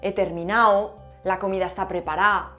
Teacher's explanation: En Chile vamos a tener también la aspiración de la S en posición implosiva, o sea, a final de sílaba. Se va a eliminar muchas veces la D intervocálica que va entre A y O entre dos As.